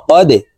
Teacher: এই দাল কলকলা নিচের দিকে ধাবিত করে ধাক্কা দিয়ে উচ্চারণ করব